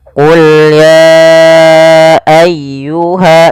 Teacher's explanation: pada lafal ayyuhal kafirun ditekan ya-nya.